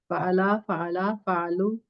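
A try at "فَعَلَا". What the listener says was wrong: दूसरे वाले को लंबा नहीं किया अभी आपने।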